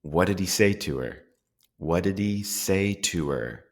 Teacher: What we're listening here for here are how the function words reduce down to the schwa sound. Another feature of function words that you will notice is that especially in American English, the H sounds will drop. So, we won't say, "What did he say to her?" We will drop the H sound.